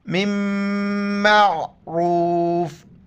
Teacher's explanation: نون میم میں ادغام ہو جاتا ہے، ادغام کے بعد وہ پھر میم پڑھا جاتا ہے، نون نہیں پڑھا جاتا ہے